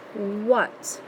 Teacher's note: I'm not hearing ah, and I don't hear A, I actually hear almost like the short U sound. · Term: oddball